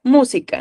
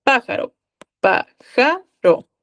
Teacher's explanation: sabemos que el acento va a estar en la antepenúltima sílaba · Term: esdrújulas